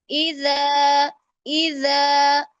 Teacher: زا والی سیٹی نہیں آنی چاہیے اس میں. زال ہے تو نرم پڑیں گے کیونکہ حروف لثاویہ میں سے ہے. · زبان کی نوک جتنی آپ سامنے والے دانتوں کے باہر والے کنارے سے لگائیں گے لفظ خود بخود نرم ہو جائے گا